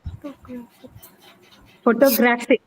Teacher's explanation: Now the stress is on the third syllable graph.